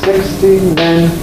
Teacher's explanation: we get this shift effect, we lose the second stress on the T. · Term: stress shift